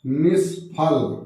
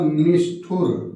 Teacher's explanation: विसर्ग परिवर्तित होकर मूर्धन्य सा हो जाता है।